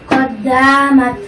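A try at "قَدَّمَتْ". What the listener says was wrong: এর তার মধ্যে মাদ হয়ে যাচ্ছে, মাদ হবে না। কদ্দামাত কদ্দামাত কোনো মাদ হবে না।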